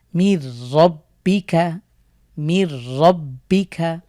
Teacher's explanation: নুন সাকিনের পরে র আসার কারণে আমরা গুন্না ছাড়া মিলিয়ে পড়ছি